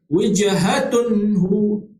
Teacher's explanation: Izhar halqi. Masuk izhar ni itu kita baca dengan terang, jelas, tanpa dengung.